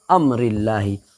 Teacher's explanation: اللہ کے لام باریک ہوگی اس لیے کہ اللہ کے لام سے پہلے زیر ہے